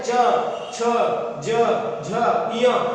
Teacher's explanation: उसके बाद में जो चा वर्ग है च छ ज झ य, जब हम इन वर्णों को बोलते हैं उच्चारित करते हैं तो ये कहां से, जीभ कहां लगती है, छत को छूती है, किसकी, मुंह की छत अर्थात तालु से उच्चारित होते हैं, इसीलिए इनको कहा जाता है तालव्य व्यंजन